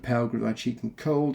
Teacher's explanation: in this line, there are 3 stressed syllables. There's pale, there's cheek, and there's cold, which disrupts the rhythm, perhaps to show Byron's emotional disturbance and his heartbreak.